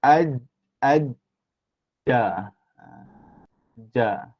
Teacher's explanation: lidah kita bahagian tengah tu akan melekat di tekap tu di langit atas